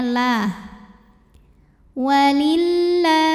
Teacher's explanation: Lam pada lafaz Allah dibunyikan secara tarqiq sebab huruf sebelumnya berbaris di bawah kasrah. Maka cara baca lam jalalahnya adalah ditipiskan pangkal lidah datar. Jadi bunyinya la.